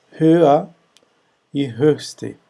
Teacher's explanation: as palavras no comparativo do superlativo apresentam som arredondado, né, anterior, que é Ö. Então, höher e höchste.